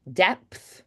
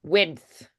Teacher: um it's it's like a similar stop plosive feeling except the the P is going to be the lips and the D is going to be the flick of the tongue